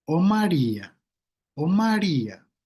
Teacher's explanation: esta melodía ascendente y luego descendente de una tónica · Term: contorno vocativo